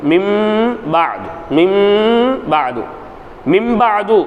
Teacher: நூனை சின்ன மீமாக மாத்தி மின் பாது எப்படி ஓதணும் மின் கொஞ்சம் சத்தத்தை மூக்கால வெளிப்படுத்தணும் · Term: குன்னா